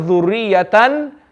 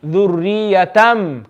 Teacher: We're going to change the fathatain into a meme. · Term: iqlab